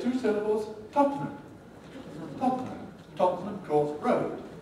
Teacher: tottenham is now a candidate for compression so we get two syllables